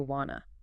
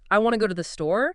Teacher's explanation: You're basically shrinking two syllables want to down to one wanna. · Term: reduction